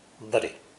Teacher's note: You will also hear my American flap T sound, which occurs when a T is between 2 vowel sounds.